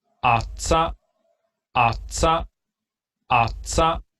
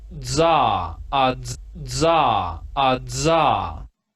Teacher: la comparación entre el dentoalveolar africado sordo y el sonoro